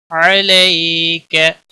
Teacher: या लेन है, नरमी के साथ थोड़ा खींच कर अदा करेंगे